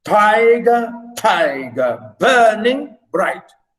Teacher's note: You know, stress, unstressed, stress, unstressed, stress, unstressed, stress. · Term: trochaic